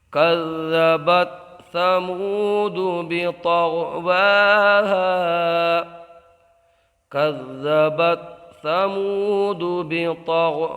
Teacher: یہاں واو میں مدہ ہوگا, ایک الف کھینچ کے پڑھیں گے. یہاں غائن کو پر پڑھیں گے, طوا کو پر پڑھیں گے کیونکہ غائن اور طوا دونوں مستعلیہ میں سے ہیں اور مستعلیہ کو ہمیشہ پر پڑھا جاتا ہے.